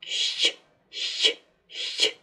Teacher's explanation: Звук «щ» – согласный, глухой, мягкий. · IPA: [щ']